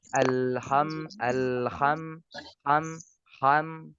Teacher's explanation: orang non Arab membacanya menjadi Bunyi k